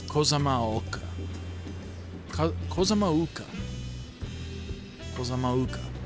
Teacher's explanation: Typically when apostrophe is in the middle of a word like that, it is like I don't know if you'd call it a glottal stop, but it is certainly a break.